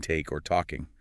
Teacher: It's a completely different structural shape compared to the flat, sharp t sound in take or talking. With flat t, it's just a quick, clean tap of the tongue. No rounding, no friction.